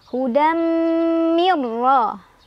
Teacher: Ada idgham bila gunnah karena ada nun sukun bertemu dengan huruf ra. Cara bacanya nun sukunnya dileburkan atau dimasukkan ke ra tanpa dengungan. Jadi cukup ditekan.